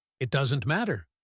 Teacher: Does not contracts to doesn't, and the negative stress is on doesn't. Matter is strong.